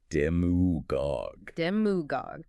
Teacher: pronounced demagogue, with the stress squarely on that first syllable